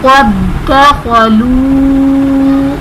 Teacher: قد دخلوا میں دال ساکن بھی ہے، دال مشدد بھی ہے، تو یہ دونوں دال ایک دوسرے میں مدغم ہو جائیں گے